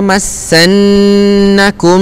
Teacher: dibaca dengan dengung dua harakat